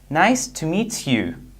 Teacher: When we have T sound plus Y sound, the result is Ch sound.